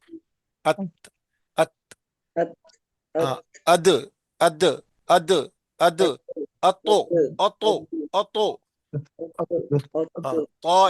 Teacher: वो दांतों की जड़ों को लग रही है जुबान की नोक